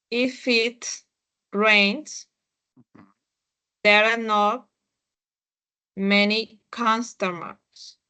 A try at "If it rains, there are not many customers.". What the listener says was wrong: Ok, muy bien.